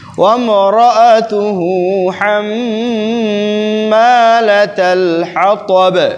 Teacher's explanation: চুপ চুপ দাঁড়া বলো না কেউ মরাতুহু হাম্মালাতাল হাতাব বলো ওয়ামরাতুহু রায়ের মধ্যে তাকরার সিফাত আছে